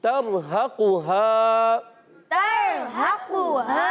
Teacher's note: قاف حروف مستعلیہ میں سے موٹے حروف سے موٹا کر کے ادا کریں گے